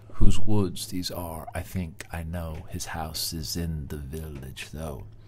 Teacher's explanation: really what we're detecting in the rhythm are four stressed syllables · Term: tetrameter